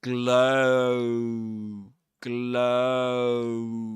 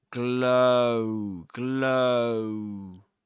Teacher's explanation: This is a diphthong. The one in glow is an O diphthong. That is to say, a vowel sound made up of two vowel sounds